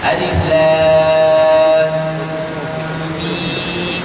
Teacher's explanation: yang mim itu kita matikan, lepas tu kita masukkan huruf mim pula. Lam mim mati bertemu dengan mim. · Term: idgham syafawi